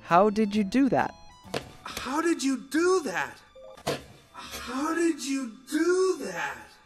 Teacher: the D sound and the Y sound combine to make a J sound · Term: connected speech